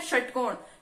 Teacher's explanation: हमारी जीभ को हल्का सा पीछे से मुड़ के फिर हम श बोलते हैं, ऐसे योग करती है हमारी जीभ, ठीक है। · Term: मूर्धन्य